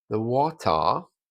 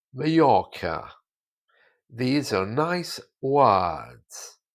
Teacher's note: So all of the R's are replaced with A's.